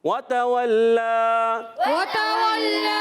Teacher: واو پر زبر، تا پر زبر، واو پر زبر، آخر میں لام مشدد بھی اور کھڑا زبر بھی ہے، یہ جو مشدد ہے ذرا رک کر ادا کرنا ہے ، کھڑا زبر ہے ایک الف کھینچنا ہے، بقیہ کو نہیں